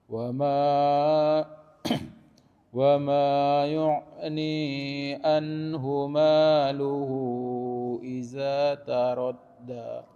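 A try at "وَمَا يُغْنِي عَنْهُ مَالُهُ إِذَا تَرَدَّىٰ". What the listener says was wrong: Za-nya kemudian yughni, gha-nya dia harus mengalir. Wa ma yughni anhu maluhu idza taradda.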